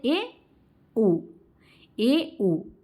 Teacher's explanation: अर्धसंवृत क्या है दोस्तों, अर्धसंवृत स्वर में आधा लगभग बंद हो जाता है, हमारा जो मुंह है वो आधा के लगभग बंद रहता है